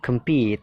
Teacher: Yang ketiga, compete, jadi pitnya itu ditekan, kemnya itu kan dibaca pecel ya, kem ya, jadi singkat, kemnya singkat, compete, pitnya itu ditekankan.